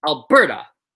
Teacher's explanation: So in Alberta, the second syllable is where the stress is.